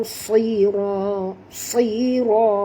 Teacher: huruf sad kena baca tebal walaupun dia berbaris di bawah, kerana sekiranya sahabat tidak membaca dengan tebal dia jadi huruf sin, dah jadi makna lain, ya.